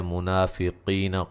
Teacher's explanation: منافقین قاف کو موٹا ادا کریں گے